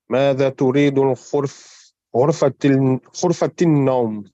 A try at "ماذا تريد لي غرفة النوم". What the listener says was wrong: That's a lam. They haven't put the kasra. لي. ماذا تريد لي غرفة النوم. This lam here.